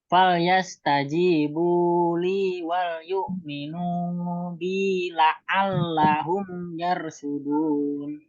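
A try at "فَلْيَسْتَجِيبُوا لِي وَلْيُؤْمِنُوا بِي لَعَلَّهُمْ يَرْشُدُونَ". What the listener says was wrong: Sudah pas, Pak.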